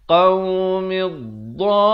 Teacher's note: Mak lazim kalimi musaqqal dibacakan dengan 6 harakat. 6 harakat. Jangan baca 4 atau 5 harakat.